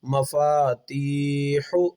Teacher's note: ما کو جلدی پڑھیں گے، فا کو کھینچ کر پڑھیں گے مفا، تا کو کھینچ کر پڑھیں گے چونکہ حروف مدہ کا